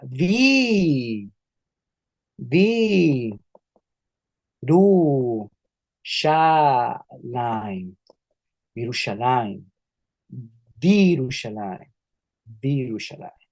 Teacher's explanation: esa hirik se transforma en una hirik yod, que es una vocal súper larga